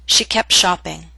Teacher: in fast and formal speech, we drop the T in that consonant group. The consonant group is P, T, Sh.